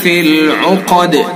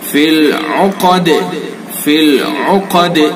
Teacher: قاف کو پر، اور یہ جو ہے اس کے اندر دال کے اندر قلقلہ